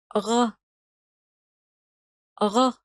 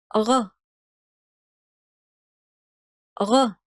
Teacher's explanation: From the kh position, the tongue moves a bit further back, the muscles tighten, and the vocal cords vibrate.